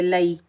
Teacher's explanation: ثم، حمزہ کے نیچے زیر بغیر کھینچے پڑھیں گے، لام کے اوپر زبر آئی، آگے یائے ساکن ہے، یائے ساکن سے پہلے لام کے اوپر زبر ہے، یہ یائے لین ہے، اس کو ہم نرمی اور جلدی سے ادا کریں گے